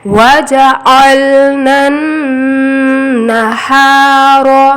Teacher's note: نون کو نون سے ملاتے ہوئے یہاں پہ تھوڑی دیر ناک میں آواز کو گھمائیں گے۔ وَجَعَلْنَا النَّهَارَ، ہا نرم آواز میں، را موٹا۔ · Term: غنہ